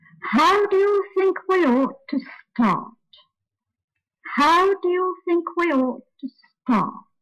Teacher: the sentence is really in three parts corresponding to the number of stressed syllables how followed by four weak syllables then ought followed by one